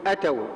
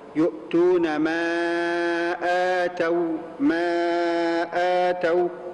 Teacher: أولها مد بدل بمقدار حركتين. بعض الناس يقول أتوا، وهذا خطأ، وهذا خطأ.